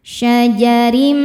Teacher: Ro dibaca tarqiq karena harokatnya di bawah, maka ro-nya ini tipis.